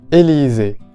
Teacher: tenemos a la vocal E cerrada en la primera sílaba, I en la segunda, y de nuevo la vocal cerrada E en la última sílaba